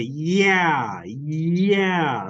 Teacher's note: it's a Glide like if I say yeah yeah that's the sound J at the very beginning